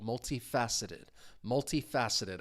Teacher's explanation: the stress syllable is that third syllable